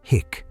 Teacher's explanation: a trap door at the back of your throat called the glottis snaps shut. Air slams into that closed door and hick. That's the sound of air crashing into your vocal cords. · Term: hiccup